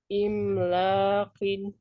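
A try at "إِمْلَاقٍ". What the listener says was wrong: kurang lama mimnya.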